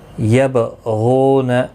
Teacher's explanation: با ساکن پر قلقلہ ہوگا. غین مستعلیہ ہے، پر پڑھا جائے گا. · غین مستعلیہ ہے، پر پڑھا جائے گا. غو واو مدہ ہے، ایک الف کی مقدار کے برابر کھینچ کر پڑھیں گے، نہ کو کھینچنا نہیں.